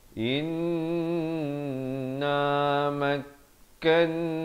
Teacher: nun yang ada tanda syaddah ataupun sabdu ini, jangan lupa hukumnya wajibul gunnah dengung dua harakat